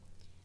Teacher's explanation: we actually start quite low around the same level as tone two but then it's a sharp decline and you really want to finish as deep as your voice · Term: tone six